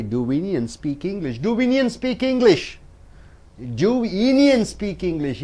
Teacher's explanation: Indians and English are stressed.